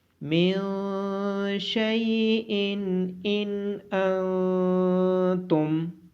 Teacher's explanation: نون ساکن کے بعد حروف اخفا میں سے شین ہونے کی وجہ سے نون ساکن پہ اخفا ہوگا۔